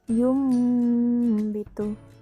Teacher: Terjadi jika nun mati atau tanwin bertemu dengan huruf ba, maka cara bacanya dibaca mim dan kadar panjangnya 2 harkat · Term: iklab